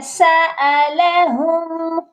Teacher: اور یہاں میم ساکن پر غنہ ہرگز مت کریے گا، کیونکہ یہاں پر صرف اظہار شفوی ہوگا، یعنی کہ ہم نے میم پر آ کر رک جانا ہے، میم پر غنہ نہیں کرنا